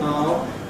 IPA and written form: ɑː.l (I'll)